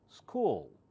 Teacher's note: English L is slightly different. You pull back your tongue and say school.